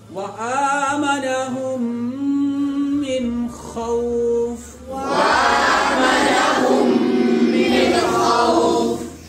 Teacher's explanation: नून साकिन के बाद हुरूफे इजहार में से, हुरूफे हल्की में से, हुरूफे इजहार में से या हुरूफे हल्की में से खा आई है, इसलिए यहां पर क्या होगा? غنہ نہیں ہوگا، اخفا نہیں ہوگا، نون کی آواز کو ظاہر کر کے پڑھنا ہوگا